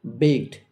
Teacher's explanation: ক সাউন্ডের পরে ইডি রয়েছে, আর তাই ইডি এর উচ্চারণ টয়ের মতো